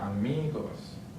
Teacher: Next one ends with an S, so the stress syllable is on the second to last.